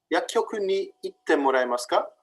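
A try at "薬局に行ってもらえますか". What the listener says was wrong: Good. Yes.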